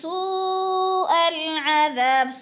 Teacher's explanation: پڑھنا ہے، مو پہ بھی وہ مدہ ہے، نکم سوء العذاب، سو پہ مد ہو رہی ہے، چار حرکات کے برابر کھینچ کر پڑھنا یعنی لمبا کر کے پڑھنا ہے ، ال کو جلدی جلدی ادا کرنا ہے کیونکہ لام حروف